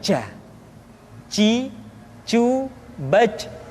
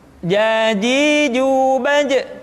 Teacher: Kesalahan yang sering muncul ketika mengucapkan huruf ja adalah mengalirnya nafas. Ja, ada nafas yang mengalir.